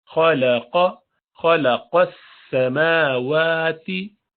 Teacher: खा भी भारी है हुरूफ मुस्तअलिया में से, और क़ाफ भी, खलक़ लाम पतला रहेगा। · सफ़ीर वसल की साउंड आनी चाहिए, ये सीन की क्वालिटी है।